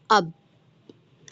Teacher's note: ठीक है? दोनों होठों से मिलने से बाधा होता है।